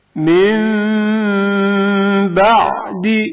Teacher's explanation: نون ساکن میم میں بدل جائے گا. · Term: اقلاب